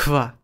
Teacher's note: The digraph <hv> is pronounced /kʰv/